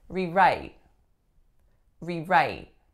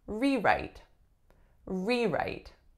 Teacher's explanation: I'm saying it as a verb because my strongest syllable is the second